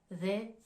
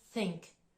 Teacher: Donc là, vous pouvez distinguer le premier mot en TH, they. C'est une prononciation qui va mobiliser les cordes vocales, tandis que le mot think, c'est un TH un peu plus doux, où là, on ne va pas chercher dans la gorge à prononcer de façon plus accentuée en fait.